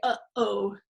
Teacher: the sound it's the closure between the uh and the o the thing that separates those two vowels is the glottal stop